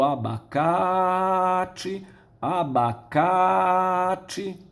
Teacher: nós vamos esticar a vogal da sílaba tônica